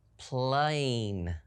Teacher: we hear it closed off by a consonant sound, but we do hear a long A in the word plain, so we're going to see it as P-L-A consonant E.